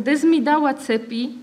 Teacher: Veta ako kde zmi dáva cepy je príkladom takéhoto spodobovania, pretože S je neznelá a M znelá spoluhláska, a keď sa neznelá a znelá stretnú, vyslovujú sa znelo